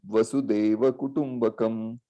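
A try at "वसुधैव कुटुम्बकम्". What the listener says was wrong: Yeah, Vasudhaiva. Okay, that Dhaiva Kutumbakam. So that means that earth, Vasuda, that Vasuda, not Deivam, not that Deivam. So there is a difference there. Vasudhaiva Kutumbakam.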